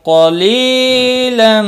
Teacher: قاف مستعلیہ ہے پر پڑھا جائے گا ، لی یا مدہ ہے اور